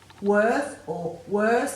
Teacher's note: If you say worth or worse, there's no air after the W, so you know there's no H there.